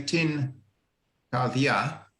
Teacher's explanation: So the point is that if you have a N sound at the end of a word coming before something which is unvoiced, which you can't sing, so this, you would say tin kardia, the N and the K kind of combine and it becomes a bit more of a G